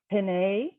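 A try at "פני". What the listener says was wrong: Yep.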